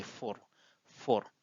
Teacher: they don't retain the ending vowels